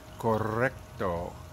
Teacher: it can flutter like that against the top of your mouth the rolling r is not down in the back of your throat